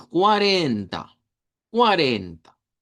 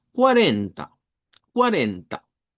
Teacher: Cuando nosotros decimos el número 40 en español, digamos que se escucha bien plano, pero en portugués al centro debe de llevar fuerza de voz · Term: sílaba tónica